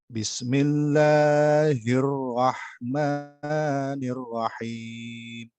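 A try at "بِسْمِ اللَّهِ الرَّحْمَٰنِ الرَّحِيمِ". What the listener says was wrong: Sinnya alirkan, sin alirkan. Sin alirkan perhatikan. Bismillahirrahmanirrahim. Nah, jangan diputus. Sin jangan diputus. Sin dengan mim itu jangan diputus. Jangan bismi. Nah, itu ada putus tuh. Bismi.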